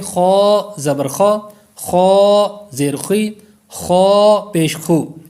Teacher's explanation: خا اور غین دونوں کا ایک ہی مخرج ہے، خو خی خو، اس انداز میں۔ یہ حروف مستعلیہ بھی ہے، اس کو ہم پر یعنی موٹا بھی کریں گے